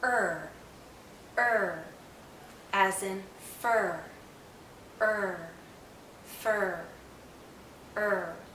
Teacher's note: when I say earth the central part is going up because the tip is curling back there's some tension in my tongue when I say earth